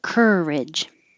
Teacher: the vowel is which is really just the R, the tongue in the R position, and making noise.